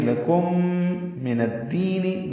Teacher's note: لکم میں میم ساکن کے بعد میم آنے کی وجہ سے ادغام ہے، غنہ کریں گے. لکم من الدین، نون دال سے ملا رہے ہیں.